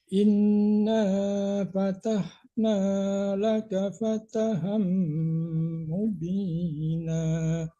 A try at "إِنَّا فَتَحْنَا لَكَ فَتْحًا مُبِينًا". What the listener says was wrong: Ya jangan fataham ya, fataham jadi mantul tanya fatham. lakonya koknya kecil, tipiskan, jangan lako tapi laka, tipis.